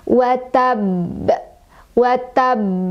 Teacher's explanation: Jadi ba-nya itu kan huruf qolqolah, ketika sukun dia maaf, ketika di berhenti maka dia jadi sukun ya, tadinya fathah jadi sukun. Maka cara bacanya adalah dipantulkan, dan pantulannya besar, kubro. Dan ada catatan di sini ya, karena ada tasydidnya, jadi sebelum mengeluarkan pantulan kita juga harus sempurnain dulu tasydid di huruf ba-nya. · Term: qolqolah kubro